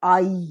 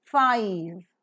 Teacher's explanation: a combination of ah and E pronounced as I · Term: diphthong